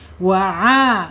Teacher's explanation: Ain ada di tenggorokan tengah ya. Ada tenggorokan tengah keluarnya.